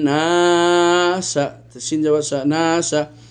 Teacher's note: গুন্না নুনে মুশাদ্দা করার সাথে সাথে আলিফ কে টানলাম